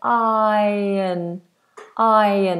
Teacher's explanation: Notice the R is silent. We just say iron.